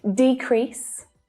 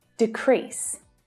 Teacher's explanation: as a noun the stress is on the first syllable as a verb the stress is on the second syllable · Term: word stress